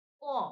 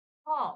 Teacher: প বাতাস কম বের হচ্ছে আবার খ উচ্চারণ করো দেখো বাতাস বেশি বের হবে